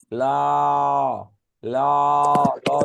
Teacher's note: যে ধ্বনি উচ্চারণে জিহ্বার দুই পার্শ্ব দিয়ে বাতাস বের হয়। · জিহ্বার ডগা সামনে আসে আর বাতাস দুই পাশ দিয়ে বের হয়। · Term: পার্শ্বিক ধ্বনি